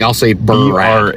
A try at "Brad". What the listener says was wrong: Try to say it without the space. Harder.